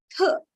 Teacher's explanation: when I say th, I don't feel any vibration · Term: voiceless